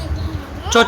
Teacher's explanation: च बोलोगे ना, तो आपकी जीभ तालु को टच करेगी। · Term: च वर्ग